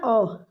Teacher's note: अगर आप ओ बोल के देखो, आपकी जीभ का मध्य भाग इसमें काम कर रहा है, ठीक है। मध्य स्वर ओ है।